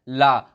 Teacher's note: अब पार्श्विक व्यंजन क्या होता है, तो इस व्यंजन का जब हम उच्चारण करते हैं तो हमारी जीभ ऊपर टच हो जाती है और जो हमारे मुख से हवा निकलती है वो साइडों से निकल जाती है, ना कि बीच से निकलती है, क्योंकि जीभ बीच में जाकर लग जाती है ऊपर हमारे और हमारे साइडों से हवा निकलती है, तो इसलिए इसे पार्श्विक व्यंजन कहते हैं।